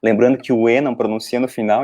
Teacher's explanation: É lá na garganta o R, sendo votre. Lembrando que o E não pronuncia no final, então fica um negócio meio parado no R.